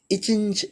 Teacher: இச்சி என்று சொல்லுகிறபோது அன்னத்தை இடையும் நாவின் இடையும் பொருந்துதல் என்பதாக நாம் இங்கு உணர்ந்து கொள்ளுதல் வேண்டும் நம்முடைய காணொளிகளை முழுமையாக காண்பது மட்டுமல்லாமல்